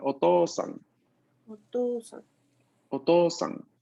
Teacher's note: La O va a ser pronunciada larga, mientras que la U es inexistente. Entonces está ahí solo para indicarme que la O es larga.